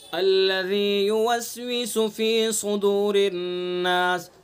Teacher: साद को पुर करेंगे चूँकि हरूफ मुस्तालिया में से, और रा को बारीक पढ़ेंगे चूँकि रा के नीचे ज़ेर है, और अन्नास नून मुशद्दद है इसलिए नून के अंदर गुन्ना करेंगे।